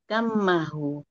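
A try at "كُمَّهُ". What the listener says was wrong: Di domah kafnya tuh. Kum.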